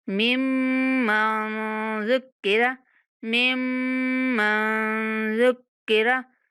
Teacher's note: मुशद्दद मीम पर गुन्ना करेंगे और नून की आवाज़ तक जाते हुए हमने नून पर इख्फ़ा करना है।